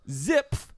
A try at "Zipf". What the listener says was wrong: The F is not silent.